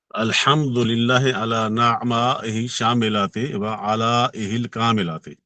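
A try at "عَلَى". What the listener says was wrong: वो आला अला नहीं होता, अलहमद आला।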